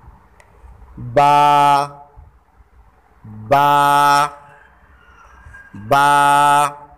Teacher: बा जो है ये दोनों होंठों के तर हिस्से से अदा होता है।